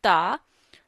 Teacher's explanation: we read ta by the tip of the tongue and roots of upper front teeth. So touch your tongue to the roots of upper front teeth and read ta.